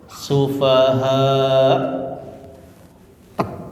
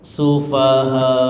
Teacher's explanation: ketika dimatikan maka ada hamzahnya tek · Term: hamzah sukun